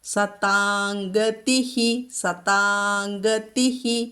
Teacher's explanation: തീ പറയണം കേട്ടോ, അത് മൃദുവായ ദീ ആയിട്ട് ചൊല്ലരുത്. · സതാംഗതിഃ, സതാം എന്ന് പറയില്ല. അനുസ്വാരത്തിന് ശേഷം ഗ, കവർഗത്തിലെ ഗ വന്നതുകൊണ്ട് കവർഗത്തിലെ അനുനാസികമായ ങ ഇവിടെ ചൊല്ലണം.